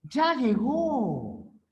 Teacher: el tono es descendente o sea el tono final es descendente ya llegó es una afirmación ya llegó el tono final